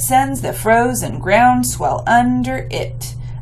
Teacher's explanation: which I would emphasize swell because it's a more important word